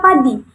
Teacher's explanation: Nah, kemudian kata padi ini merupakan kata tak bersuara karena ketika kita mengucapkan kata padi tetapi belum mencapai vokal A begitu, masih dalam konsonan P. Nah, ini dia tidak menghasilkan suara